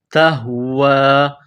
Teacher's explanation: یہ نقطوں والی تا ہے، اس کو باریک کرنا ہے، تا کو ہا کے ساتھ ملانا ہے. یہ چشمے والی گول ہا ہے، منہ سے ہوا نکالنے کی طرح اس کو پڑھتے ہیں